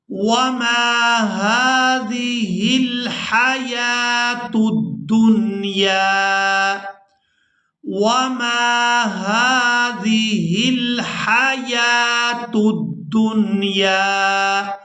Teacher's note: یہاں پر جو آپ لوگ واو دیکھ رہے ہیں یہ رسم الخط ہے، اس کو ادا نہیں کریں گے۔ یا پر کھڑی زبر ہے تو یا کو کھڑی زبر کی وجہ سے کھینچ کر ادا کریں گے۔